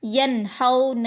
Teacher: نون ساکن کے بعد ہا آیا ہے، یہ بھی اظہار کا حروف ہے، ینہون، یہ حروف حلقی میں کا حروف ہے۔